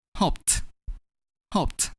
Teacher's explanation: when we add -ed to the verb “hope” which has the ending sound [P], we’re gonna pronounce -ed as [T].